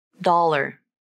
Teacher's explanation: you use a light L to link the two syllables.